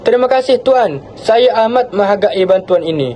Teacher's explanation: Hentian suara selepas terima kasih memisahkan penghargaan awal daripada pujian yang lebih formal. Nada suara yang tenang dan menurun pada Tuan menunjukkan rasa hormat yang mendalam, diikuti dengan intonasi menurun pada amat menghargai untuk menunjukkan kesungguhan dan penghargaan.